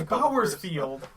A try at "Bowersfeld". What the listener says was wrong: Oh, there's no I! Bowersfeld.